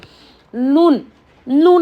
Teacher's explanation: और देखिए मीम नून में गुन्ना पाया जाता है, ज़बान की नोक ऊपर वाले मसोड़ों को लगने से नून अदा होता है और इसमें गुन्ना पाया जाता है। · ज़बान की नोक ऊपर के मसोड़ों को लगने से, यानी ये जो हमारा कच्चा एरिया तालू भी बोलते हैं उसको, नून नून अदा होता है।